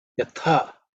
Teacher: This is the second letter in the cha varga, so it has to be aspirated with mahaprana.